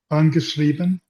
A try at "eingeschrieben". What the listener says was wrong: Okay, you have to pronounce it correctly because it is eingeschrieben, and you sound like you're saying angeschrieben.